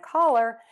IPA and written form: kɔlər (CALLER)